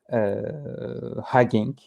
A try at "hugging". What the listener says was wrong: Not hanging. Hanging is something else.